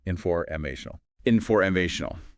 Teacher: The main stress, the primary one, is on MA. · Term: primary stress